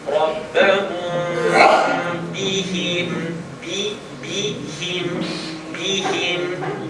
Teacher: The meme sound of rabbahum is going to vibrate between my lips.